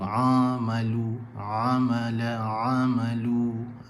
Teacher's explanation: Ni bahagian tengah kerongkong, ain dan ha. Jadi kalau sebut ain, dia tak boleh masuk suara ke hidung, tak boleh. Kalau masuk suara ke hidung, maksudnya kesilapan pada melontarkan suara, kesilapan pada mengeluarkan huruf ain tu.